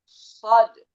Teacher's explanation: Lidah belakang itu agak diangkat sedikit makanya nanti dia lebih tebal itu daripada sin dan z. · tebal, lidah yang belakang, lidah yang pangkal belakang itu agak diangkat sedikit